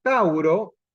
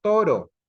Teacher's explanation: se crea un diptón o tauro latín pasó a ser toro ahí se suprimió un diptongo la a y la u ya no aparece